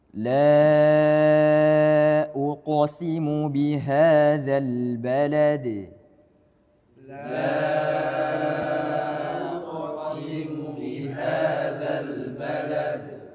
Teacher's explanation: Qaf hurufnya tebal, maka qalqalahnya juga ikut tebal.